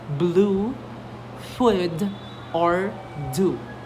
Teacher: The lips are rounded and the tongue is high and back also like the vowel in blue food or do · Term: long